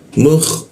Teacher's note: posisi kha itu di atas jakun